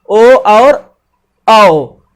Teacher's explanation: कंठ और ओष्ठ दोनों से मिलकर बना है